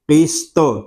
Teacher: قاف اور طا اس سے پر ہیں کہ یہ دونوں حروف مستعلیہ میں سے ہیں